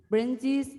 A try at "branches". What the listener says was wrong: Kenapa kamu kalau ngomong ada i-nya? Branches. Bukan branches. Gak bisa ngomong branches. Kenapa selalu branches? Ya, ini memang susah kalau udah aksennya pakai aksen pare-pare. Kamu baca bahasa Inggris pakai aksen pare-pare.